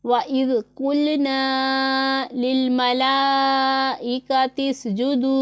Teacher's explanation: वाइज़ में आपने देखना है कि ज़ाल में हमने सीटी की आवाज़ नहीं निकालनी · तो इसलिए हमने पढ़ना है वाइज़, और कौफ पुर पढ़ा जाने वाला हरफ है, इसे हमने पुर ही पढ़ना है